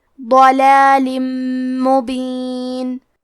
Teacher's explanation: کلمت ضلال میں حرف الضاد کو موٹی آواز میں پڑھیں گے